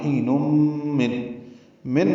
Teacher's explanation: تنوین کے بعد میم آنے کی وجہ سے ادغام ہوگا۔ ادغام ناقص ہے، مع الغنہ